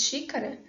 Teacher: quando nós falamos xícara, muitas vezes esse último A quase nem é realizado, de tão átono que ele é.